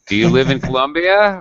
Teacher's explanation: do you live in colombia i still use rising intonation